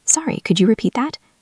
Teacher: Your voice should go up at the end to show it as a question. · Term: intonation